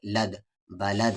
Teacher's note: اور یہاں پر قلقلہ ہوگا کیونکہ دال ساکن ہے رکنے کی صورت میں